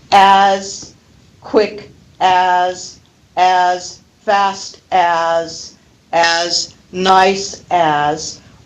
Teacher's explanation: We never pronounce the full form of as. We reduce as to uz.